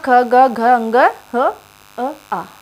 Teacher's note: कंठ से बोले जाने वाले हैं